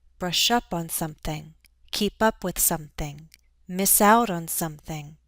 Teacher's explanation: We're stressing the verb and the first of two particles.